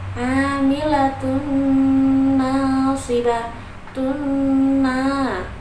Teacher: Di situ ada idgham bihunah karena huruf ta-nya berharokat dhammah tanwin bertemu dengan huruf nun bertasydid. Dibacanya dengung sampai ditahan sampai 3 harokat.